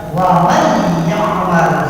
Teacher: Wa man ya'mal, ada ketemu nun mati bertemu dengan ia dan cirinya adalah tasdid, maka nun ini dilewat, dibacanya langsung ke ya-nya. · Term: idgham bigunah